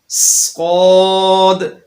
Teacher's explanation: صاد کے اندر سیٹی ہے اور اس کی آواز کے اندر موٹائی پائی جاتی ہے۔ لہذا سین اور صاد کی آوازوں کو موٹا یا باریک کرتے ہوئے آپس کے اندر مکس نہیں کیا جائے گا۔